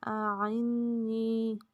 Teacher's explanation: نون پہ غنہ اور جائے مدہ یا ساکن سے پہلے زیر، اس لیے نون کو لمبا کریں گے